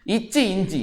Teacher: நாவின் இடை அண்ணத்தின் இடை